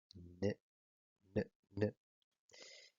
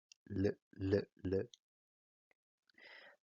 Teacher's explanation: todos tienen en común que la punta o la lámina de la lengua toca con el alvéolo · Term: alveolares